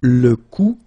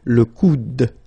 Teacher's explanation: you don't insist on this final e, it only gives you the sound of d at the end